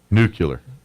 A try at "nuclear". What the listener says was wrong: You're putting the U in front of the L. I don't think nuclear is a real word.